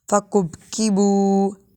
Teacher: با حروف قلقلہ میں سے ہے اور کاف باریک ہے. فقب ایسے نہیں پڑھیں گے.